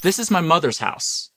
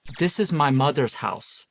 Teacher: Anytime you're pronouncing words with a th sound in the uh standard American English, the th sound tends to be pronounced more like a d